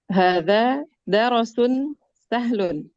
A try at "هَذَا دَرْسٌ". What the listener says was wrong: Roknya sukun bun, hada darsun.